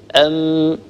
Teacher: الغنة تكون ملازمة للميم لا تنفك عنها إطلاقا، سواء كانت هذه الميم مدغمة أو مشددة أو مخفى أو مظهرة أو متحركة، فالغنة ملازمة للميم دائما. نقول أم، فحينما ننطق هذه الميم ينطبق أو تنطبق الشفتان على بعضهما